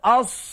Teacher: Memang angin terlepas kerana bersifat dengan sifat hamas.